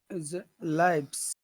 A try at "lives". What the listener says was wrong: Okay, but you're pushing it out of your mouth. Don't do that. Try to push it down. Try to eat it instead of spitting it out. Live. Lives. You gotta push it down.